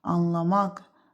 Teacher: Anlamaq sözündə son heca qüvvətli tələffüz olunduğu üçün deməli burda vurğu ikinci yox, üçüncü hecaya düşür.